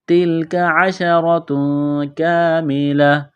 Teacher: تا اور کاف کو باریک کرنا ہے، را کو موٹا کرنا ہے زبر کی وجہ سے ، تنوین کے بعد کاف ہے، آواز ناک میں چھپائیں گے،